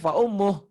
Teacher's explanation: Tapi untuk mad silah qasirah baru panjang kalau disambung, kalau diteruskan. Mad silah qasirah itu jika berhenti jadi pendek.